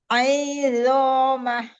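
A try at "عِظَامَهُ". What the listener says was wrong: Aidhomah. Ai-nya jangan dipanjangkan. Aidhomah. Ai. Ambil aja makhorijul huruf ain, buka lagi tenggorokannya ya. Buka lagi. Rahangnya buka lagi. Lalu keluarkan aja itu harokatnya sudah al-jauf. Aidho. Jangan ai. Jangan ai. Langsung. Ai.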